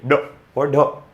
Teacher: ड और ढ जब पढ़ेंगे तो आपकी जीवा जो होगा मूर्धा से टच करते हुए एकदम नीचे आती है। इनको द्विगुण व्यंजन बोला गया है।